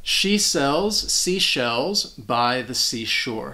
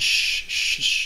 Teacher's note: So you have the S sound and that sh sound. They're both voiceless sounds and your tongue is just right behind your front teeth for that S sound.